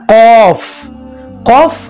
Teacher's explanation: জিহবার গোড়া তার বরাবর উপরে তালুর সঙ্গে লাগাইয়া দুই নুক্তাওয়ালা কফ এই হরফের সিফাত হচ্ছে ছয়টি যাহার সিদ্ধাত ইস্তেলা ফিতাহ ইসমাত কলকলা